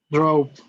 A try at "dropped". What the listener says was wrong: Yeah, you have to say dropped. Pronunciando estos verbos regulares con la pronunciación t.